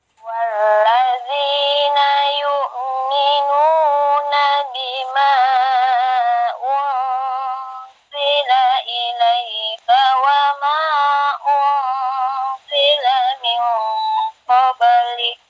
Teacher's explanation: Jangan lari ke n, nun, lari ke z. Nunnya disamarkan, terus lari ke z, ancang-ancang ke z. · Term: Ikhfa yang ausad